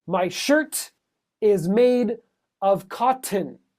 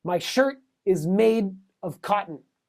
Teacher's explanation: The T will be a stop and the D is a little bit more subtle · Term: stops